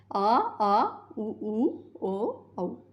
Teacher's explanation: पश्च स्वर जिनके उच्चारण में जीभ का पीछे का भाग सक्रिय रहे